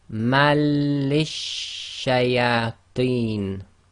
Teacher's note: so the assimilation takes place without nasalization